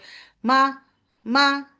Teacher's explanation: মিম ফাথা বলার সময়, মা শুরু করার সময় আপনার গুন্না হচ্ছে, কিন্তু মিম ফাথা বলার সাথে সাথে আপনার গুন্না থেকে বের হয়ে আসতে হবে। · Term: কাম আউট ফ্রম গুন্না